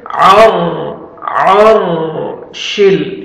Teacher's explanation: रा साकिन से पहले जब फतहा आ जाता है तो रा को पुर करेंगे, आइन को अपने सही मखरज से अदा करके रा को पुर करना है आपने।